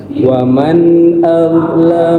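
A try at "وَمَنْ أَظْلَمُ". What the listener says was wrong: Tebalkan za. Wa man az bareng-bareng. Azlamu. Digigit. Azlamu.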